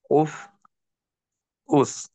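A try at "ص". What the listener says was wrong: সদটা কিন্তু মোটা বোঝা যাচ্ছে না। তো সদ আর সিনের পার্থক্য করার জন্য একটা কৌশল আছে। কৌশলটা হলো, সদের উচ্চারণ করার সময় উপরের দাঁতকে নিচের দাঁতের থেকে আমরা আলাদা রাখবো উচ্চারণের সময়। আর সিনের উচ্চারণের সময় দাঁতের সঙ্গে দাঁত লাগাই দিতে পারি। যেমন স, এই উচ্চারণটা করলাম, উপরের দাঁত কিন্তু নিচের দাঁতকে স্পর্শ করেনি। স, তো সায়ের সময় সা স্পর্শ করলো। জেরের সময় সই, সি, সই, সি।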